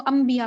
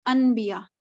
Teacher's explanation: नून साकिन के बाद आपको बा नज़र आता है तो आप उसको अम्बिया पढ़ते हैं इंस्टेड ऑफ अनबिया